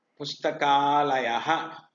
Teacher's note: The short vowel a and the long vowel a both are replaced by similar long vowel.